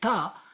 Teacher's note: rolls backwards and hits the jaw upwards if I say ta my tongue hits the back of my teeth